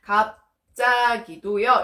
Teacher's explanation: 여러분 지금 비읍 뒤에 지읒이 된소리로 바뀌고 있습니다. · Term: 된소리 되기